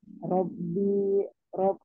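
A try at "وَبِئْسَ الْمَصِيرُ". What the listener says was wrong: wa wa bukan ro wa. Ya, tekan pada hamzah. Wabi wabi sal masir.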